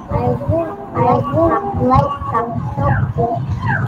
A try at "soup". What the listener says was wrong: Okay, not soap, soup. Once again.